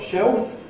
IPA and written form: ʃeof (shelf)